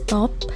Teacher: pada kata bahasa Inggris top, diucapkan top dengan T apikodental